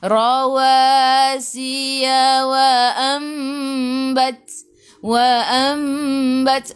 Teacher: Mim kecil ekor ke bawah iqlab dengung 2 harakat. Rapatkan bibir tapi jangan tekan.